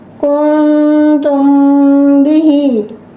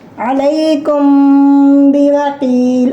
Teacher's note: If a ba comes after Mim Sakina, Ikhfa Shafi is done within the Mim Sakina and you will do here Gunna.